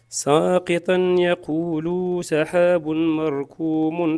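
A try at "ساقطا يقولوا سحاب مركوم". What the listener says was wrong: انتبه لهذا نطق السين ساقي ساقي حرف مرققة مع أنه يعني متبعة بحرف القاف، لكن القاف مفخمة والسين مرققة. ساقي والمد كذلك بعد اللام، هذا مهم. يقول سحاب مركوم، يقول هذا من الأخطاء الجارية. يعني أخطاء قد يغير المعنى، يعني حذف المد.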